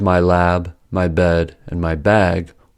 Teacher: The way to distinguish between these two sentences is through the vowel length, since the vowel lengths are unaffected by the devoicing. So, the vowel length of words with originally voiced consonants is noticeably longer even though their final voiced consonants are devoiced. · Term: Devoicing of voiced plosives